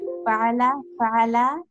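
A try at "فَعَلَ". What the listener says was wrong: ফাআলা বলে একটু টান দেবেন, ফাআলা ফাআলা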